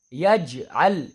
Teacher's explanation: جیم کی آواز ٹکر کھا کے، مخرج ٹکر کھا کے الگ ہوگی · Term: قلقلہ